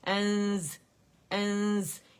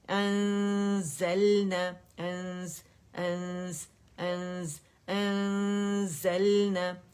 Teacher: اس میں صفیر ہے whistling sound ہے تو وہ بھی آپ کو فیل ہوگی تو آپ کو تو آواز سے ہی پتہ چل جائے گا کون سا لیٹر ہے جس کی وجہ سے آپ نون کو چھپا رہے ہیں.